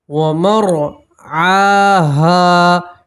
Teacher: آپ کو موٹا پڑھیں گے، پور پڑھیں گے، ومر، ٹھیک ہے، عین کے اوپر کھڑا زبر ہے تو آپ ایک الف کے برابر کھینچیں گے